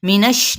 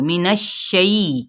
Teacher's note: دیکھیں کھڑا زبر ہے، منش نون کی زبر کو شین کے ساتھ تفشی لیٹر ہے، باقاعدہ اس کی بھی شی کی ساؤنڈ آنی چاہیے